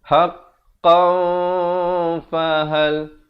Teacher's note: Ini kena baca dengan ikhfa, tanwin bertemu fa. Haqqan, asalnya haqqan, tapi bila datang fa disamarkan dengan kadar 2 harakat